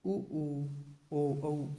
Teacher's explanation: इनका उच्चारण करते समय होठों की आकृति वृत्त के समान हो जाती है, इसलिए इन्हें वृत्ताकार स्वर कहा जाता है।